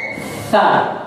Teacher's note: Jadi ujung lidah bertemu ujung gigi seri bagian atas. Jadi lidahnya sedikit agak dikeluarkan, ya.